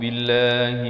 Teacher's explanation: Lafzul jalalah di sini dibaca nipis kerana datang sebelumnya baris kasrah. Billah dan la ini dibaca 2 harakat.